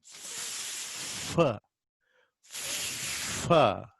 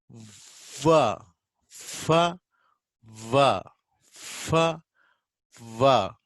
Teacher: Fa is pronounced by making your lower lip touch the upper teeth. Okay, not total closure of air, the still air escapes. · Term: friction of air escaping